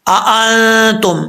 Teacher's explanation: یہاں پر سمجھنے والی بات ہے، دو حمزے اکٹھے آ رہے ہیں. اب یہاں پر پہلا حمزے کو واضح کر کے پڑھنا ہے، دوسرے حمزے کو بھی واضح کر کے پڑھنا ہے کہ کہیں ایسا نہ ہو کہ ایک حمزے کی آواز جو ہے وہ کہیں ختم ہو جائے.